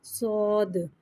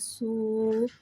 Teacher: صاد حرف مستعلیہ ہے لہٰذا اس کی آواز حلق سے موٹی ادا ہوئے گی. صاد کو سیٹی کے ساتھ ظاہر کر کے پڑھیں گے